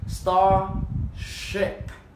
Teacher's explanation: Mình dành chút chữ R mình uốn lên vào một chút nào. The R so you move your tongue backward a little bit.